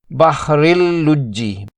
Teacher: تنوین کے پوشیدہ نون کی آواز بالکل ختم کر دی جائے گی اور را کو براہ راست لام سے ملا کر پڑھا جائے گا۔ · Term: ادغام بغیر غنہ